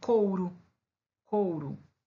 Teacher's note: A vogal, né, O, e depois eu tenho a semivogal U. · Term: decrescente